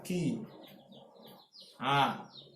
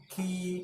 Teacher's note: kasroh ketemu ya sukun, maka dia akan jadi ya ki. Ki akan panjang. Ki kalau kita tutup nggak bisa.